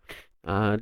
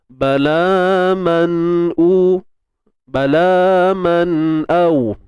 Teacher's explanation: Nun mati bertemu hamzah, izhar halqi. Kita jelaskan sebutan nun tu. Dia ada dengung dia, cuma kadar sedikit lah.